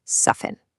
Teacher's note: Take soften. The T in there, completely silent.